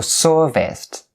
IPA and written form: ˈsɜːr-vɪst (serviced)